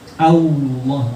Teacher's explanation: Kita mengucapkan seperti Allah ditambah naikkan bagian belakang lidah, jadi Allah. Tidak boleh ada huruf waw nyempil di situ.